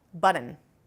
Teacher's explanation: our very first instance of a flap in the data set actually occurs with a nasal release